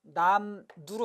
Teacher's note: 앞에 있는 미음 때문에 뒤에 게 바뀌었죠? 뒤에 있는 리을이 니은이 됐어요. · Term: 순행동화